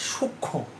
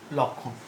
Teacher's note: যুক্ত ব্যঞ্জনের সঙ্গে যুক্ত মফলা অনুচ্চারিত থাকে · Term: সানুনাসিক